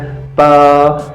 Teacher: दोनों ओष्ठ आपस में मिलते हैं